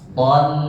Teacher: Nah, ton jangan tolu. Ton ya tarik karena lamnya tipis, to-nya tebal